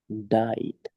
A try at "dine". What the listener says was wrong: Yes, no, don't say died. If you say died, that is the past verb of die. Die, it means you don't live on earth anymore. You already died. Die, D-I-E. No, this is dying. N, dying, dying. Đánh cái n để âm n luôn.